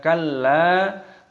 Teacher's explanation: Lam alif dibaca panjang dan ditekan, dimasukkan, dibaca kalla.